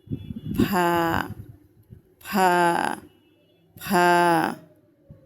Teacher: নিচের ঠোঁটের পেট সামনের উপরের দুই দাঁতের আগার সঙ্গে লাগাইয়া